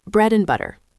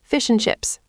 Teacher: the word and is often pronounced as n or und, not the full and. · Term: weak forms